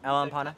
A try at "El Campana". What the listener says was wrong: You said Empana again. Campana.